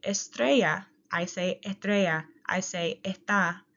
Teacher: when I say estrella, I say estrella, I say está, and I omit that S